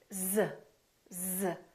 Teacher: do you feel a vibration on your vocal cords you do that's because Z is a voice sound we're using our vocal cords